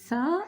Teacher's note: tha is pronounced also from the tip of the tongue but here tip of your tongue touched the Lower Side of upper two incisors